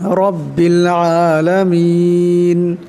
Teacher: এখানে রার উপর জবর আছে, তাই এই রাকে মোটা আওয়াজে পড়তে হবে।